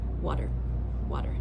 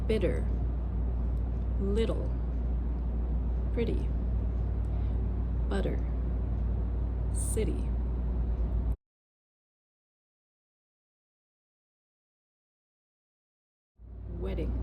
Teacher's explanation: It's not a real D. It's a quick D sound.